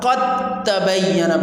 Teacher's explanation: ہم اس کو قد تبین کی جگہ قد تبین پڑھیں گے، دال ختم کر دیں گے اور تا پڑھیں گے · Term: دال کا ادغام